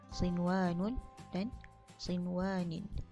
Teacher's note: Sinwanun dibaca nunnya dengan jelas, tidak dibaca dengan dengung.